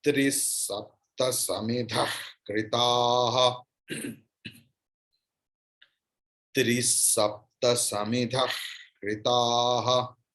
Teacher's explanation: It's ka. It's like something is stuck in my throat, and if I want to throw it out, how the sound comes, that is the sound of the visarga if it follows ka. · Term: Jihva Mulya